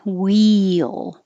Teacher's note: this is e your tongue's very high